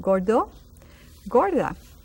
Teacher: See, that R is not very easily spelled. We in Puerto Rico sometimes we speak so fast that you don't hear that R pronounced.